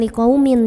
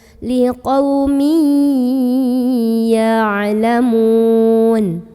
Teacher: ada idgham bi gunnah karena ada tanwin kasrah bertemu dengan huruf ya. Maka bacanya bukan liqaumin ya, tapi liqaumi, langsung ke ya sambil nahan dulu.